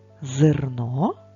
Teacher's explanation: в слові зерно е не наголошений тож ми говоримо його ближче до звука и